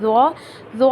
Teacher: जुबान की की नोक सामने वाली दांतों के किनारे पर लगेगी और मुंह के अंदर एक हवा सी भरेगी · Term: मोटे हरूफ